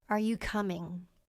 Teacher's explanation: Question. Are you coming? Voice goes up.